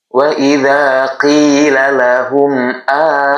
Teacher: Menyebutkan mim sukun saja dengan jelas. Jangan ditahan lama-lama. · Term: izhar syafawi